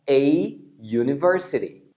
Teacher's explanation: Então quando a gente fala U, a parte mais forte é o U. Esse I do início, ele não é forte, então ele é uma semivogal, por isso que você fala U. · porque a pronúncia de U é como se fosse um YU.